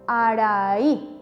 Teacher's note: ¿Dónde cargo la voz? En la i. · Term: acento prosódico